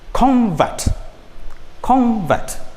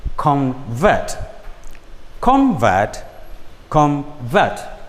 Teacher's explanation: the stress moves from the first syllable to the second syllable